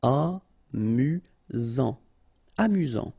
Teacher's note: You've got only one S here between the vowels, so it's really this Z sound.